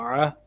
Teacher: عین کی آواز حلق سے نکالیں گے، درمیان حلق سے